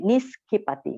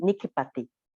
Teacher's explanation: So in Pali, s and k. Okay, when you put s and k sound, it becomes kk